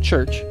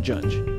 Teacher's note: a stop and a fricative in rapid sequence, treated as a single sound segment. The two English affricates are ch, as in church, and j, as in judge.